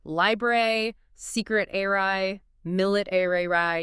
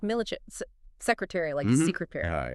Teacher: In American English, we say the whole airy sound, like library, secret airy, millet airy. You hear the A, the R, the Y. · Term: full ARY